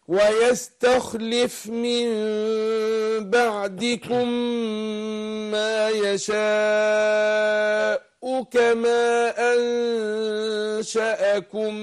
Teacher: تحقيق الهمزة في يشاء مع الضم